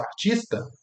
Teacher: Quando você vê a forma fonética disso, artista, tá tudo certo, né? Você vê que tem um tch, mas depois dele tem um i.